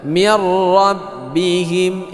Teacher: Cuman nun mati ini tidak dibaca lagi, langsung ke tasydid yang ada di huruf ra ya. Rabbihim, izhar syafawi, bukan izhar hakiki. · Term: idgham bila gunnah